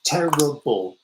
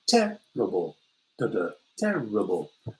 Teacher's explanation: Terrible, 3 syllables. Terrible, terrible. The first syllable is stressed, the next 2 not.